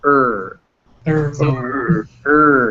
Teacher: uh the two vowels they were both fused now imagine and if the schwa and the letter r fuse together and you get this er